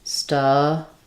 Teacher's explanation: So the stub syllable is stressed. It has the schwa. Even though we have two B's, we only say one B sound, stubborn.